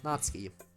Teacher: the U is still kind of in there, but it's very hard to make out